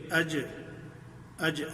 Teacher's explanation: بڑی نرمی سے اپنی زبان کا وہ درمیان والا حصہ اپنے مقابل تالو سے لگتا ہے اور اس سے اج جیم ادا ہو جاتی ہے